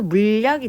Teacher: 그리고 얘는 물, 약 이렇게 먼저 니은 첨가되고 자, 리을이 니은에 영향을 줘서 유음화가 일어나겠죠. 그래서 물약이 되는 거예요.